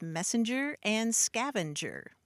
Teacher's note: that word passenger acquired what linguists call an intrusive N, or the parasitic N